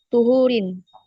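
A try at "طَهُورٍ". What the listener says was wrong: Oke, di sini yang lebih tepat bacanya bukan tuhur ya, tapi tohur. Sama kayak sigot mubalaghah wazannya fa'ulun, sama kayak gofur, sobur dan seterusnya. Jadi goiru tohurin.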